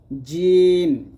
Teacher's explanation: জিম জিহ্বার মধ্যখান তার বরাবর উপরে তালুর সঙ্গে লাগবে জিম জিম উচ্চারণ করার সময় আপনার জিহ্বা যেন দাঁতে না লাগে